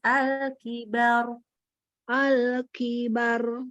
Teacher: Jadi ba-nya tipis, ra-nya naik.